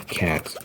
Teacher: Represents a near open front unrounded vowel